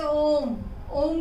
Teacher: तो इसमें स्वर ह्रस्व दीर्घ दोनों स्वर से ज्यादा समय लगता है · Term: प्लुत